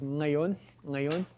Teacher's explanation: English doesn't allow words to begin with velar nasals, but there are languages that do. · So it starts with a velar nasal.